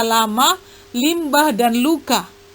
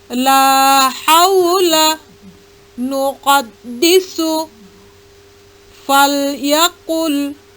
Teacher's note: pada ujung lidah bagian bawah dengan langit-langit atas ada huruf lam, baik berharkat fathah, kasroh maupun dhammah, maupun berharkat mati.